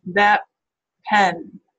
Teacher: the T instead you can say it to yourself and feel do your lips close um instead of having your tongue meet the Alva Ridge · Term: assimilation